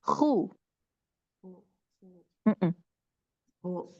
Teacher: Al-halqi. Kho ini di tenggorokan dia paling atas ya. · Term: Makhraj kho